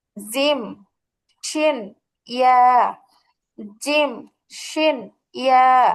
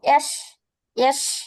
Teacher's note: জিহ্বার মধ্যখান তার বরাবর উপরে তালুর সঙ্গে লাগায়া